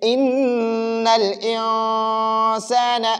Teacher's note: تو اسی طرح پڑھیں گے انسان، نون ساکن کے بعد سین ہے اور سین حروف حلقی میں سے نہیں ہے تو ہم اب اس نون ساکن میں غنہ کریں گے، ہم پڑھیں گے ان الانسان، نون کو ناک میں چھپائیں گے